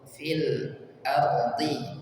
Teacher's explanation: lam sukun dan ra sukun dialirkan dulu karena sifatnya adalah tawassut, maka ketika dalam kondisi sukun seperti ini dialirkan dulu.